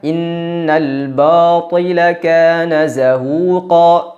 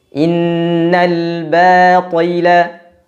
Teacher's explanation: Tidak boleh ada udara, tidak boleh ada angin yang menyertai huruf ba. Kesalahan yang kedua adalah menebalkan huruf ba ketika bertemu dengan huruf yang tebal.